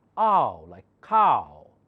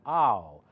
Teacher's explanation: Ah changes to oo, okay? Cow. Look, here W, where it takes the sound of oo.